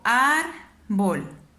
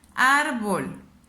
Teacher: Árbol. Ya me di cuenta que la elevo más en esta sílaba que es ar. Última sílaba es bol. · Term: sílaba tónica